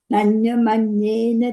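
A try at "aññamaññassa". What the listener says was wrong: You put the instrument, you said Nanyamanyena. It's Nanyamanyasa in the text we have.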